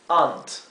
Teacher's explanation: la A y la U no suena exactamente como la O profunda, O, pero suena entre una A común y una O. Es aunt, y esto es ant.